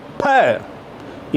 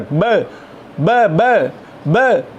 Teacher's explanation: P is more explosive than b. So bilabial plosives.